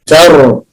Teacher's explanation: ما نقولش الطاء، ما نقولش ترميهم، لا تاء، تر، والراء مفخمة، الراء مفخمة علشان ساكنة وقبلها مفتوح · ترميهم، التاء مرققة، ما نقولش الطاء ، ما نقولش ترميهم، لا تاء، تر، والراء مفخمة، الراء مفخمة